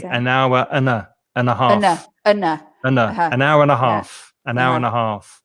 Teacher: I might even not pronounce the d sound of the and. I might just say an hour and a half.